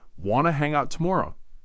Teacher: Remember that slight rising intonation at the end.